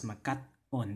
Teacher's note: So that way we have makat-on, and this hyphen again shows an internal pause. It's not necessarily a glottal stop, it's a pause.